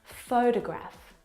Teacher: the first syllable is the stressed syllable you can hear it very clearly